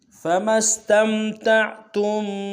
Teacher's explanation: ادا کریں گے، میم کو آگے سین کے سامنے لانا ہے، سین کی سیٹی باریک ہوگی